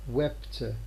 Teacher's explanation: This phoneme p is realized as a sequence of first glottal stop followed by p in the context where this is its place followed by a consonant. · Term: glottal stop accompaniment